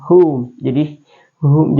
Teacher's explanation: Kalau ha itu adalah masuk di e wastul halqi jadi dia berada di ee pangkal tenggorokan